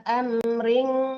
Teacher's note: Ala amring itu dengung ya, ikhfa hakiki. Amring disamarkan ke eng gitu.